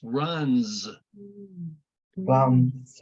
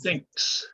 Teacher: However, with number 8, you don't say runs, you say runs, the Z sound. It has that voiced S sound. So if you put your hand to your throat, you can feel it vibrate with this S